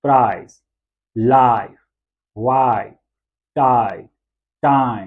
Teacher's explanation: पहले आ की साउंड है फिर ई की साउंड है, आई। देखिए दो अलग अलग यहाँ पे वॉवल सिंबल्स जो हैं वो यूज हुए हैं, राइट, जो हमने मोनोफ्थोंग्स में किए थे। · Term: आई की साउंड